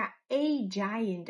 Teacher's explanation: E muitas vezes a gente escuta A rapidinho, e às vezes a gente escuta A. Quando a gente escuta a giant, a gente está enfatizando o artigo.